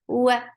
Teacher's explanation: for wow, circle your lips. For fatha, open your jaws. The sound is short.